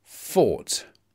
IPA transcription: fɔːt